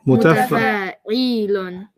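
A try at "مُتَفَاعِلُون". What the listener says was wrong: The E is too long. There's no ya there. Mutafa'ilun.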